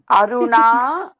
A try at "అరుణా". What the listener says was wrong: కదండి, కొత్త కాబట్టి దీర్ఘం తీయాలి, ఇంకా బాగా తీయాలి. అరుణ అలా చెప్పండి కొన్నాళ్ళు, ఒక 10 రోజులు అయితే